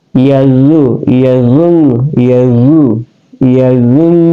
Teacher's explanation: Kemudian nun di sini adalah gunnah ya. Gunnah ya, berarti yazun didengunkan ya.